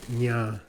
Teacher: Must be low tone, okay? The nasals must be low tone. Otherwise they change meaning.